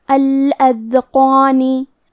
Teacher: فہیہ، کلمت الاذقان میں حرف الدال پہ جزم ہے تو ہمیں دال کو ظاہر کرنا ہے۔ قاف اور مد الف کو دونوں کو تفخیم سے مطلب بھاری آواز میں پڑھیں گے